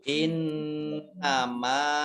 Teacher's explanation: Kemudian nun tasdid dibaca mendengung atau gunah ditahan 2 harokat.